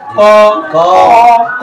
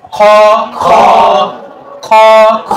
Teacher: অল্প প্রাণ বর্ণ উচ্চারণ হবে মুখের ভিতর থেকে, মুখের ভিতর থেকে শ্বাস বের হবে না। যেমন যদি আমি ক উচ্চারণ করি, ক ক ক, আপনি যদি এখানে দেখেন সেভাবে কোনো বাতাস বের হবে না।